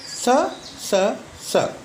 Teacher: 3 अघोष उष्वर्ण हैं, जिनको बोलने में कंपन नहीं होता, उसे अघोष कहते हैं